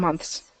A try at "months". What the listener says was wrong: So get that th in there.